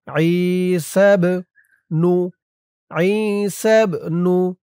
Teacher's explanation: এই বাটা হচ্ছে কলকলার হরফ, ধাক্কা দিয়ে পড়তে হবে।